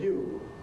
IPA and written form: juː (‘you’)